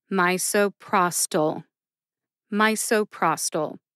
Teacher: two syllables get the emphasis in this drug name as well my and Pros get the emphasis Pros gets the most emphasis